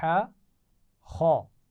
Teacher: ہا کی آواز گلے کے درمیان سے ادا ہوتی ہے اور باریک آواز ہوتی ہے، جبکہ خا کی آواز گلے کے اوپر کے حصے سے ادا ہو رہی ہے اور موٹی آواز ہے